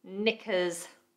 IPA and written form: nɪkəz (Knickers)